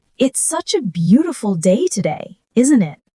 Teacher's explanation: Notice how the intonation rises at the end. That's what makes it sound friendly.